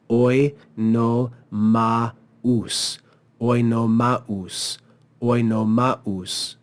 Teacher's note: We see the diaresis here, which says no, this is not the diphthong au. This is two separate syllables. So we read it as oi no maus.